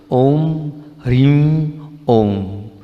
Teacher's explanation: ये जो अनुस्वार है इसका उच्चारण आप नाक से करो। · बहुत ध्यान से नाक से, ह्रीम का जो उच्चारण है वो नाक से करो